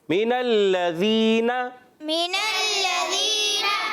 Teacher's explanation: لام پر تشدید ہے, ذرا رک کر ادا کریں گے, اس پر بھی زبر ہے, نہیں کھینچنا. من الذین, یا ساکن سے پہلے زیر آ جائے تو یا مدہ ہو جاتا ہے, ایک الف کھینچنا ہے